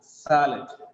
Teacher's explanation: It becomes sa because the first syllable sa is stressed. SA is stressed, that's why it gets the sound sa.